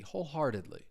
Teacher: Uh once again, you're going to hear that T. You're going to hear me pronounce it as a flap T.